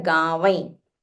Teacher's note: Just have a nasal wa. There is a anuswara there.